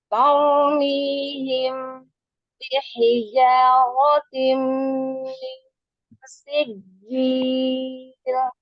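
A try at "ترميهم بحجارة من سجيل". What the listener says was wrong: Tadi bagian depannya ada yang menghilang.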